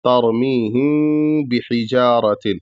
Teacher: تو اس کا طریقہ کیا ہے کہ ترمیہم بحجارۃ، یعنی ہم بحجارۃ نہیں کہیں گے، ترمیہم بحجارۃ یہ غلط ہو جائے گا. پورے میم کو نہیں ادا کرنا ہے بلکہ آدھا ادا کرنا ہے اور آدھا ناک میں آواز لے جانی ہے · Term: اخفاء شفوی